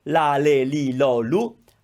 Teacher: so you're touching the palate just before your teeth start with the tip of your tongue